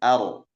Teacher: Tidak mengalir seperti rohwah, juga tidak tertahan seperti syiddah. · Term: tawassul